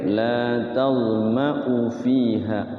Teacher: U-nya pendek. walaupun ada alifnya tapi dia pendek ya